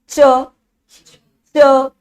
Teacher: जीभा कहां जा रही है? दांतों से ऊपर वाले भाग में तो यह हमारा भाग कहलाता है तालु।